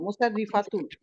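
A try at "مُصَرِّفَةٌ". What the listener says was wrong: না আপা এত বেশি টানতে হবে না। মুসাররিফাতুন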